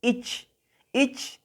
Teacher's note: No prolongamos el sonido de la I, es una pronunciación simple, como en español